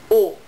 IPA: o